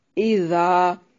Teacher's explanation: زال کو نرم پڑھنا ہے اور یہ الف مدہ ہے